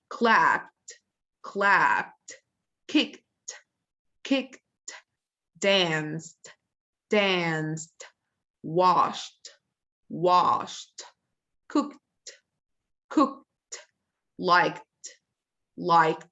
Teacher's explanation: all of them are voiceless or unvoiced sounds when you add Ed afterwards you shall pronounce the Ed as ta